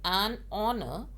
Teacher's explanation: honor is starting with h but it is silent while we are pronouncing it